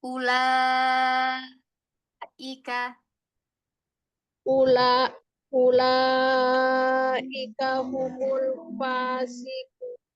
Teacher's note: Lamnya jangan ditekan. Jangan nanti jadi kaget. Jangan tiba-tiba naik. Datar aja.